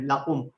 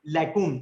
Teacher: قاف ساؤنڈ جو ہے نا آپ نے تھوڑا سا بولڈ کرنا ہے اس کو, یہ بولڈ لیٹر ہے ٹھیک. اور کاف جو ہے نا یہ لائٹ سا ہے بالکل